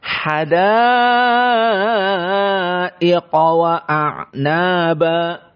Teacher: Hadaiqa huna hukmuhu al-isba', dikenyangkan menjadi panjang karena dia adalah mad wajib muttasil.